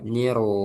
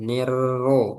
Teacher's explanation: Ya, jadi masuknya itu langsung tebal ya. Niro jangan nirro. Nir ro ah nah itu kurang tebal niro.